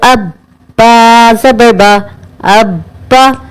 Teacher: اب ابا پڑھتے ہوئے اس بات کا خاص خیال رکھیے گا کہ قلقلہ نہ ہونے پائے